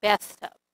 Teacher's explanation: the th sound in bathtub you stick your tongue in between your teeth